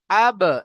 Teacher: তো সাকিন আহ, বা হলো হুরুফে কলকলা 5টির মধ্যে একটি, তাই বাকে আমরা আগের অক্ষরের সাথে মিলিয়ে কলকলার সহিত পড়বো। আব, এইভাবে কলকলা করব।